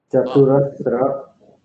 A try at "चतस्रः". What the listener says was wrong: हाँ, चतुरस्र नहीं है, चतस्र। चतस्र देखिए, चतस्र विसर्ग, चतस्र, इसमें लिखते वक्त इधर आ जाए, चतस्र।